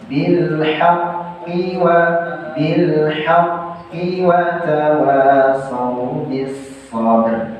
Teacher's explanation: karena qafnya tasydid saja tanpa ada mad tabi'i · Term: qaf tasydid